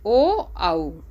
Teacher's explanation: गले और ओठ से बोले जाने वाले कंठोष्ठ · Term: कंठोष्ठ वर्ण